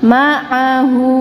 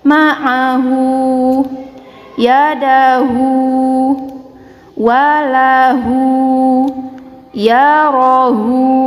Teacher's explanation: Hu ini adalah dhammah tegak. Kita panjangkan dua harokat